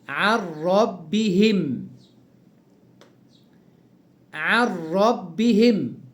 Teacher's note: ادي نون ساكنة بعدها الراء، والراء من حروف الإدغام بغير غنة. إدغام النون في الراء بس بغير غنة، هكذا: عن ربهم، عن ربهم، إدغام النون في الراء.